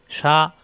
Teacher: শিন জবর শা, জিব্বার মাঝখানে উপরে তালুতে শা